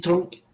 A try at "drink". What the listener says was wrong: I think you said drink but the way you pronounce it it sounds like drunk